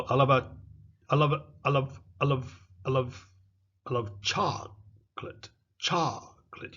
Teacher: You see the co disappears. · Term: elision